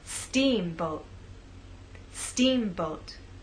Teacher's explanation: making the first part of the word louder, longer, and at a higher pitch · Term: stressed part